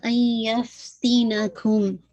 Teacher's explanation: ادغام تو ہو رہا ہے لیکن ادغام ناقص ہے نون کی کمپلیٹ آواز مرج نہیں ہو رہی ہے